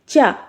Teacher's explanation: जैसे चा बोला आपने, चा, तो जो आपकी जीभ है वो हल्की सी उचक के आपके तालू को टच कर रही होगी, तालू को टच करती है, इसीलिए ये जो होते हैं आपके तालव्य वर्ड हो जाते हैं।